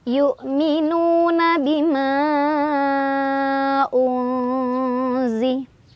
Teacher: Ada ikhfa ausat karena ada nun sukun bertemu dengan huruf zai. Cara bacanya nun sukunnya dibaca samar sambil berdengung.